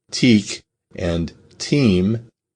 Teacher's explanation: the e is nasalized before the m but not before the k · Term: nasal vowel